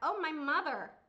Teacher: มีการรัวตรงคอมีเสียง▁r▁ซ่อนอยู่ข้างในลึกๆนะคะ